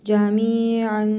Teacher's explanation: İhva qaydasıdır. Tənvindəki nun hərfini burnumuzda tələffüz edərək bir əlif miqdarı uzadırıq.